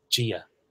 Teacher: I always feel like this sounds like a kind of wetter, fudgier sound. In fact, it sounds a bit like J for me. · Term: slender D